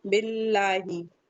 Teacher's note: लाम को चलाना नहीं है। जमा के पढ़ना है। कलकला नहीं करना है। · لام جلالہ باریک پڑھنا ہے، مرقق پڑھنا ہے.